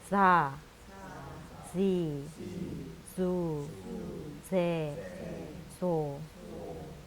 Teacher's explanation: 사 발음이 우리나라 사 발음이랑 다르게 그 이빨 뒤에 붙었다가 떨어지면서 바람 새는 소리가 나고 길고 약하게 발음을 해주셔야 됩니다.